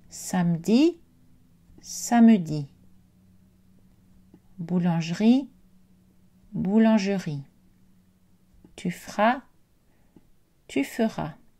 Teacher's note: cette voyelle centrale peut être prononcée ou silencieuse selon les registres et les personnes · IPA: [ə]